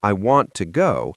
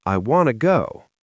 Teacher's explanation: the word to often becomes a very short t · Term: connected speech